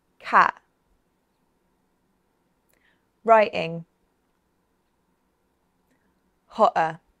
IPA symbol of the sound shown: ʔ